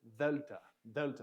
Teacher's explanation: Next letter is delta, delta. And this is kind of a D sound, but it's kind of a breathy D sound. So, and you're using your tongue a little bit, delta, delta.